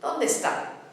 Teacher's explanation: the E of donde and the E of está, not distorting in any way, but running together. And the beat, of course, is on the final syllable as marked by the accent.